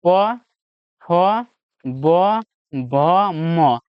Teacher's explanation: भ का उच्चारण स्थान जो आपका ओष्ठ है।